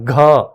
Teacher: ज्यादा प्राण बाहर आते हैं ज्यादा हवा बाहर आती है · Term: महाप्राण